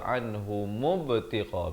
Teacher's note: ghain di hujung kerongkong, ghiru dengan kadar panjang 4 atau 5 harakat.